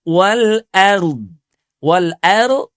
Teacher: Jadi wal or tidak boleh ya. Wal ar hamzanya jelas, tipis. Wal a sambung dengan ro sukun wal ar.